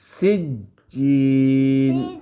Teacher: اس سین کو سیٹی کی طرح اس کی آواز نکالیں گے